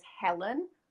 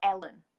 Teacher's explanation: in Yorkshire we don't pronounce the H